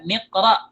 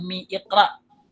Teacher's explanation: Dan kita buang hamzah wasalnya ketika kita baca wasal.